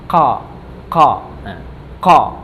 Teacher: Yang pertama adalah keluarnya dari pangkal lidah. Ya, keluarnya dari pangkal lidah dengan mengangkat ke atas langit-langit.